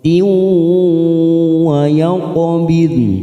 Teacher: Kasroh tanwin bertemu waw, namanya idgham biguna. Kita tekan 3 ketuk siap masuk pada huruf waw.